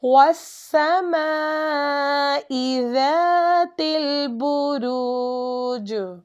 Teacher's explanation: ہم جیم کو تھوڑا سا ہلا کر پڑھیں گے